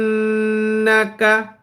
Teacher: আমি গুন্না করলাম কিন্তু নাকা নাকা টান কিন্তু দেই নাই